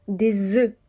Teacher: je fais bien la liaison et je ne prononce pas le F au pluriel